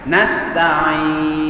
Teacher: Ismam ialah kita memuncungkan bibir mulut kita mengisyaratkan bunyi nun ya yang berbaris hadapan. Ya, di sini sebab nun berbaris hadapan, tetapi dengan isyarat sahaja, bukan dengan bunyi.